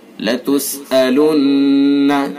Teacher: نون مشدد ہے غنہ کریں گے